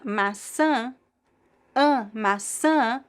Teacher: the stress goes all the way to the end. We do have a graphic accent on top of the last vowel, the tilde, Maçã is the fruit, apple.